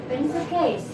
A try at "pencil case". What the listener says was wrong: Oh, C-nya dibaca K.